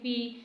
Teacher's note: یا مدہ ہے تو اسے بھی تھوڑا سا کھینچیں گے